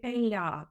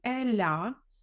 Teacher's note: не розривайте не говоріть Ель А треба казати все разом